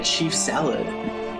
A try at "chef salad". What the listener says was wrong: You called it a chief salad.